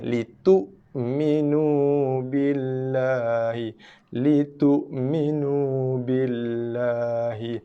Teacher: hamzah mati tak nak baca dengan litu ataupun litu minu. Keraskan dia.